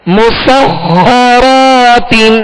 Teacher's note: مسخرات، میم سین کو باریک پڑھنا ہے، سین میں سیٹی کی آواز پیدا ہوگی، اور خا حروف مستعلیہ میں سے، لہذا پر یعنی موٹا کریں گے، اور خا پر تشدید ہے لہذا دوہرا پڑھیں گے، 2 مرتبہ پڑھیں گے.